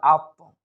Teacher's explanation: এখানে একটু কলকলা হবে, অর্থাৎ একটু ধাক্কা দিয়ে পড়ার চেষ্টা করব